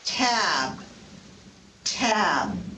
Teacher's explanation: The first T in tab is aspirated. That's what the little h, the superscript h means.